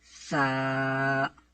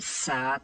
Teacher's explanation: اس حرف کو پڑھتے ہوئے اس بات کا آپ کو خاص خیال رکھنا ہوگا کہ ثا کو پڑھتے ہوئے سا سیٹی کی آواز بالکل بھی نہیں آئے. تو اس کا ایک طریقہ ہے کہ آپ اپنے اوپر والے دانت اور نیچے والے دانت جو ہیں ان کے درمیان اپنی زبان کی نوک کو تھوڑا سا باہر نکال کے پکڑ لیں نرمی سے اور پھر ادا کریں.